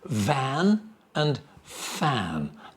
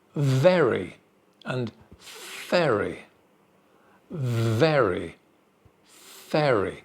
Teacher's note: The mouth shape is exactly the same for both. The only difference is voice here. The first one, van, with a you can feel vibration, van.